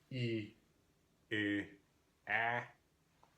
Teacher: So, E, E, A. Notice getting lower in my mouth as I say each one of those.